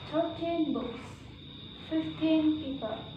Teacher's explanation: if the number followed by noun, for example, I have 13 books, 15 people. We normally put the stress on the first syllable.